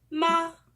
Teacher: The second tone, the rising tone, is a sound that rises from mid-level tone to high.